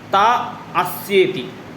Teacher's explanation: ता यहाँ पे आ दीर्घ है और अस्य में जो अ है वो ह्रस्व है